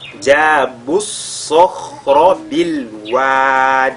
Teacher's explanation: Et le sod est lié avec at-tafkhim, de même que le kha qui suit lié avec at-tafkhim et le ra également lié avec at-tafkhim. Donc ici on a 3 lettres de at-tafkhim qui se suivent.